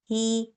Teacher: اگر کسرہ کے ساتھ یہ ہا آ رہی ہے تو اس کو ہم تھوڑا باریک رکھیں گے، اور اگر ساکن آ رہی ہوگی تو اس میں ہماری سانس اور آواز دونوں جاری رہیں گی.